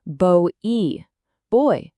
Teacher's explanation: It starts with an O shape and glides right to an E. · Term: diphthong